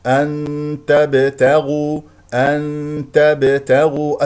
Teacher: هذا هو الاخفاء بغنه بمقدار حركتين · الباء ساكنه مقلقله قلقله صغرى لان في وسط الكلام